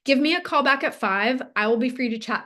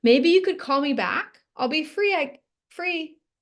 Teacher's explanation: So instead, especially when stating facts or asking for the next step, use a confident tone that goes down at the end